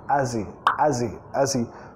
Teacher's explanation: sonido Z, vinculando, comiendo la H